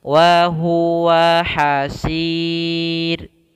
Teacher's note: Kemudian pada lafal hasir ini sama seperti sebelumnya, yaitu mad arid disukun, yaitu memanjangkan sin, boleh 2, boleh 4, boleh 6 harakat